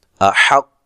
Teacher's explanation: صاف کر کے ادا کرنا ہے اس کے مخرج سے، احق، قاف کو موٹا ادا کرنا ہے، لمبا نہیں کرنا، اور حمزہ کو تحقیق سے پڑھنا ہے